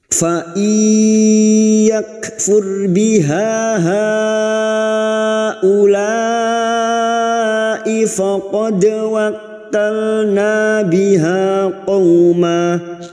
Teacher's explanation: maka siap masuk dengan mendengung masuk pada huruf ya dan mendengung selama 3 harokat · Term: idgham bi gunnah